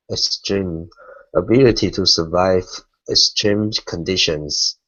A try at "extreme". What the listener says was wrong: Okay, now when we pronounce the X, it's a KS sound, so it's extreme. Instead of S stream, it's extreme.